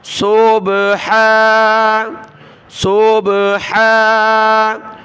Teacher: صوب، اس کو بالکل صب اس طرح نہیں پڑھنا، صوب۔ اور ہا کے اوپر کھڑا زبر ہے، ایک الف کی مقدار اس کو اوپر کھینچیں گے